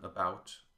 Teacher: schwa, as in about, is unaccented and a bit indistinct. It's not quite clear what it is, really.